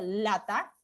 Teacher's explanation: van a ver que la lengua permite que el aire salga por los dos lados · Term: Sonido lateral